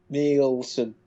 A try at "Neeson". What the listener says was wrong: No, take the L out. It's not that hard. Right, you're saying Nielsen. Say Nielsen without the L. Instead of saying, right, yeah, try this. Right, imagine you're playing football with your dad, right? And he says, on my head, son. And you want it on your knee. So you say... Hey, Liam Neeson.